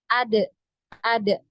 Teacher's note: ketika di sukun ya huruf Dal ini di dipantul · hurufnya tidak punya aliran udara tidak punya aliran ee suara maka itu tadi menghasilkan sifat Qalqalah